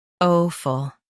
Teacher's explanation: In UK, stress o and soften ful.